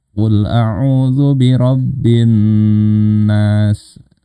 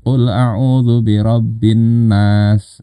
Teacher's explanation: Dengung itu ditahan ya, paling enggak 2 harokat.